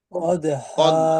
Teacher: দাল কলকলার হরফ শক্তভাবে ধাক্কা দিয়ে উচ্চারণ করতে হবে। হা আলিফ দুই জবর হান আছে, ওয়াকফের সময় দুই জবর হলে এক জবর বাদ দিয়ে এক আলিফ টেনে পড়তে হবে।